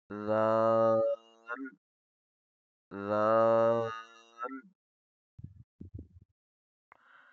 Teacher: زبان کی نوک زیادہ نرمی سے ٹچ ہو تو اس سے ادا ہوگا ذال